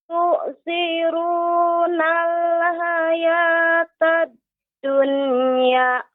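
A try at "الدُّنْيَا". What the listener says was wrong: Akan tapi Ibu, ketika mengucapkan dunia, jangan terlalu pendek juga, ya. Dilepas hayatad dunya. Seperti itu. Tidak dunya. Seolah nanti ada hamzahnya. Dunya, ya. Dunya. Seperti itu.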